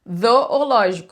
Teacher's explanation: língua entre os dentes na hora do Z, desculpa. Que é a versão vozeada do TH